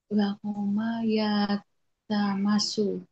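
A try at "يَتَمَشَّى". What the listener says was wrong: Bukan, ada alif di belakang. Seperti yatarabba. Nah, yatamasya.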